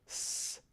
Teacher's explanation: the tip of the tongue against the alveolar ridge, making something like s. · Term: alveolar fricative